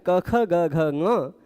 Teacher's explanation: क, ख, ग, घ इनका उच्चारण स्थान कंठ है। सीधे कंठ से हवा आ रही है।